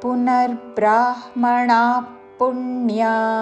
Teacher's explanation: విసర్గ ఉచ్చారణ పక్కనున్న పదములోని ప అందుకుంటూ శ్వాస వదిలి చివరిన ఫ లాగా ఉచ్చారణతో